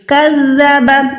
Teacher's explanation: زال کو ادا کرتے ہوئے ہمیشہ زبان کی تھوڑی سی نا زبان کی ٹپ باہر نکالا کریں, اوپر والے 2 دانتوں سے ملایا کریں. کذب, ایسے آپ کو سیٹی کی آواز نہیں محسوس ہوگی, ٹھیک ہے, تو یہ نرم حروف ادا ہو جائے گا.